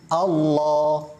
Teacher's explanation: cara mentafkhimkan lafaz Allah ini dengan mengangkat pangkal lidah